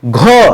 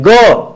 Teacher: अल्पप्राण। घ देखिए ज्यादा हवा निकल रही है। ग कम हवा निकलेगी। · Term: महाप्राण